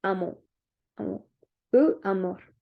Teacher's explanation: Le R est prononcé doucement ou faiblement, même à la fin d'un mot.